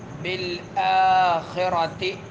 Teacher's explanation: با جو ہے شدیدہ حروف میں سے سختی کے ساتھ ادا ہوتی ہے، یہ حرف سختی کے ساتھ ادا ہوگا۔